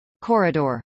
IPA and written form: ˈkɔːrədɚ (corridor)